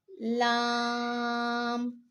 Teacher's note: जब ज़बान के किनारे सामने वाले ऊपर के 8 दांतों के मसूड़ों से लगते हैं तो ये हुर्फ अदा होता है